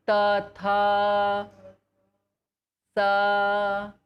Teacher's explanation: So the place for sa is danta. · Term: simple S